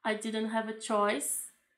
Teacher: A palavra choice, ela vai numa entonação maior.